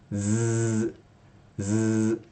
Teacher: when you say Z, Z, your voice is present